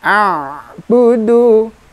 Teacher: Sifat huruf ain sama seperti huruf lam, pertengahan antara rokhawah dan syiddah. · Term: Ain sukun